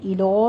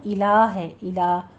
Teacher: الو نہیں کہنا، الہ ہے، الہ، لام کو باریک رکھنا ہے